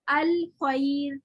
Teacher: रॉ साकिन माकबल जबर है, हालांकि हम रॉ को बारीक क्यों पढ़े, या साकिन की वजह से। या साकिन की पावर बहुत स्ट्रॉन्ग है, इस वजह से वो रॉ को मोटा नहीं रहने देता। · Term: रॉ बारीक